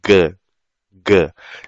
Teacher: vocês vão perceber que a língua, lá atrás da língua, vai bater no véu palatal lá atrás